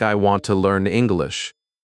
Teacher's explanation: the important words are want, learn, and English. These words carry the message. The other words are softer, quicker, lighter. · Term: stress